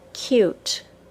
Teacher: the long U sound, U, begins with a very distinct Y sound.